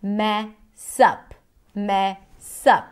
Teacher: So the stress falls on the word up, but here we see the connected speech. The S of the word mess becomes the beginning of the next syllable, which is up